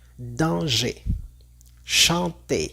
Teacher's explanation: por ejemplo, es la A n am m o también la EN o la em. Estas los vamos a pronunciar igual a una A n en el español, pero sin escuchar el sonido n o el sonido m al final. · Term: vocales nasales